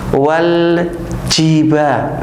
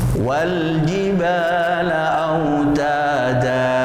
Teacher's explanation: huruf jim ini jangan sampai mengucapkan desis, ya. Contoh yang salah, wal jiba, itu kurang tepat, ya.